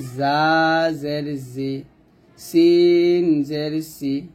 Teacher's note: তার মধ্যে জা এবং সিন পাতলা হবে, সদ মোটা হবে।